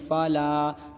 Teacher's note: جیم زبر ج، فمن فرغ فیہن الحج فلا، یہ فا ہے اور یہ زبر ہے، ٹھیک ہے، زبر کو نہیں کھینچتے ہیں، فا زبر فا، لام الف زبر لا، دیکھیے یہ الف ہے، الف سے پہلے اسلام کے اوپر زبر ہے، لہٰذا الف مدہ ہوگا، الف مدہ کو 1 الف کے برابر کھینچتے ہیں، اسلام کو 1 الف کھینچیں گے، فلا، ٹھیک ہے۔